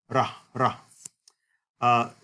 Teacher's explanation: rho was originally pronounced like a tapped or flapped R